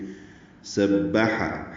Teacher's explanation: سورۃ الحشر کی پہلی آیت سبح، سین حروف صفیریہ میں سے ہے، سیٹی کی آواز سے ادا ہوگا، با سے ملائیں گے۔ سبح، ہا وسط حلق سے ادا کریں گے